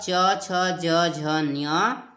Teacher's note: च वर्ग जिसे तालव्य बोला जाता है, उच्चारण स्थान तालु है।